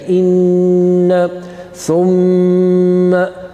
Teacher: You got to produce a nasal sound. You got to do a slight delay there. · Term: noon mushaddad and mim mushaddad